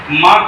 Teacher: म का उच्चारण स्थान ओष्ठ है और नासिक भी है। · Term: नासिक व्यंजन